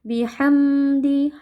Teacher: Huruf mim sifatnya tawassud. Ada sedikit aliran suara tapi tidak panjang atau tidak sampai mencapai bacaan ghunah. Karena di sini hukumnya izhar ya.